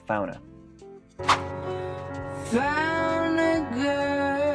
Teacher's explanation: esta transición se está pronunciando como fauna, con un sonido de N súper rápido.